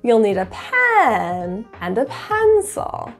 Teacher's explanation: you'll hear that up and down pitch within each syllable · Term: slide